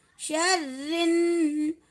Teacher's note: व मिन शर्रिन, रिन रा को ज़ेर के साथ बारीक पढ़ेंगे